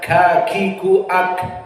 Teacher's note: maka kaf di sini makhrajnya adalah aqsal lisan, kakiku ak, dan sifatnya dia adalah hams.